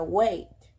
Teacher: tenemos a que produce el cierre hacia la i